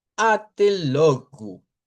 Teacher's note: la o al final que se convierte en u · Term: o corta